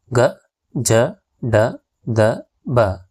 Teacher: ಕಡಿಮೆ ಉಸರಿನಿಂದ ಉಚ್ಚರಿಸುವ ವ್ಯಂಜನಾಕ್ಷರಗಳಿಗೆ ಅಲ್ಪಪ್ರಾಣ ಎನ್ನುವರು ಇವುಗಳನ್ನ ಉಚ್ಚರಿಸಬೇಕಾದರೆ ಕಡಿಮೆ ಉಸರನ್ನ ಬಳಸುತ್ತೇವಿ ಹಾಗಾಗಿ ಇವುಗಳನ್ನ ಅಲ್ಪಪ್ರಾಣಕ್ಷರಗಳು ಅಂತ ಕರೀತಾರೆ ಇವುಗಳು